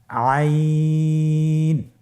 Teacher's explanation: আইন হরফটি কণ্ঠনালীর মধ্যখান থেকে উচ্চারিত হয়